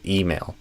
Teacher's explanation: So I would stress the E and I would not do a I sound. I would do a E.